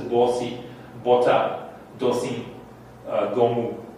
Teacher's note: these are all borrowed with the vowel o. That's a mid-round vowel.